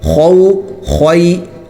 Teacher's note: خو کا جو لفظ ہے وہ موٹا ہوتا ہے اور یہ حلق سے نکلتا ہے، خو نکالنا ہے، اس میں احتیاط کرنی چاہیے کہ کھے کی طرح یہ لفظ نہ نکلے، کھو نہیں ہونا چاہیے بلکہ حلق سے اور موٹا۔